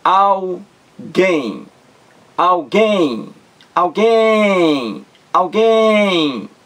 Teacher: Duas sílabas. A sílaba mais forte, aquela em que você demora mais, alguém. É a última sílaba, gain. Alguém.